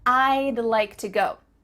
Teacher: to go do you see how we can speak quicker because we're cutting off all the sounds in the word would except for that final d